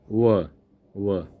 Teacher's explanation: तो देखिए व बोल के देखिए व दंत दंत से भी आ रहा है और ओष्ठ से ऊपरी दांतों और निचले ओठ के स्पर्श से हो रहा है। ठीक है ना? ओ ओ ओ जीभ देखिए ओ व ऊपर दांत और नीचे वाला ओठ व व तो ये हो जाएगा दंतोष्ठ।